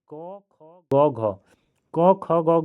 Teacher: हमारा जीभ का पीछे वाला भाग तालु से सट रहा है। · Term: कोमल तालव्य